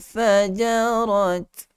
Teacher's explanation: huruf fa keluar daripada dua gigi kacip hadapan. Maknanya dua gigi kacip bahagian hadapan pada atas itu sentuh pada perut bibir bahagian bawah. Fajarat. Ada sedikit hamas.